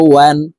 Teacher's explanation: ওয়াও দুই জবর ওয়ান, ওয়াও হরফ ঠোঁট গোল করে দুই ঠোঁটের মাঝে ফাঁকা রেখে উচ্চারণ করতে হবে